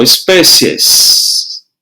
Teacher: Perceba que o som do E é mais forte do que o I.